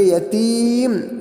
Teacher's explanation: یتیم کے اندر جو ہے ہم اس کو معروف پڑھیں گے، یتیم، یتیم ایسا نہیں، بلکہ یتیم، زیر کی آواز نیچے کی طرف جاتی ہے، تو جو ہے ہم اس کو نیچے کر دیں گے